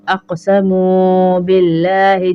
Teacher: قاف پہ کلکلا ہوگا،